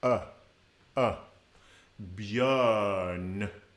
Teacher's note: there you have a nice open uh, using those lips forward